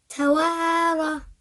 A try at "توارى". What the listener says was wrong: Say توارى. It's not ra. Not too long, yeah? Say توارى.